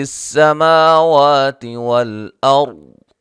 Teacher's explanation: اور را کو موٹا ادا کریں گے، ضاد کو موٹا ادا کریں گے